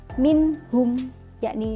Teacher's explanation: nun sukun bertemu dengan hak jadi bacanya harus jelas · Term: izhar halqi